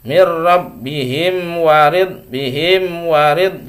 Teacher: Jadi wawu termasuk selain dari mim dan ba, maka harus jelas bacanya, jangan terlalu lama ya. Itu idhar syafawi.